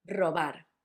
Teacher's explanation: The tricky bit was to know that the first one was a hard one, r, and the last one was soft